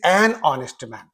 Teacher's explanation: Why and here means this word is beginning with a voel sound though it is beginning with h it is beginning with this sound. So this h is there but it is dead it is silent